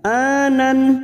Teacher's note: fathah tanwin bertemu hamzah idhar halqi, dibaca jelas tanpa mendengung. Nun sukun atau tanwin yang bertemu dengan 6 huruf ini, hamzah, ha, ha, kha, ain, ghain, termasuk hamzah ini karena fathah tanwin bertemu hamzah dibaca jelas, namanya idhar halqi.